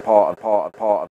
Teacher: the vowel in start and palm moves further back